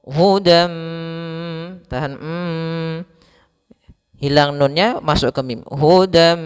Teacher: Kemudian pada lafal hudam mir rabbihim, yaitu di sini pada lafal dan ketemu mim, ini kita namakan dengan idgham bi gunnah, yaitu adanya tanwin an bertemu dengan huruf mim. Cara membacanya masukkan tanwin ke huruf mim dan ditahan.